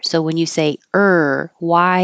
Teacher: your tongue goes very high and then down and back for the r So when you say IR why you're just holding your tongue